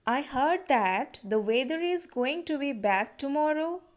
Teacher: here i give stress on heard weather bad tomorrow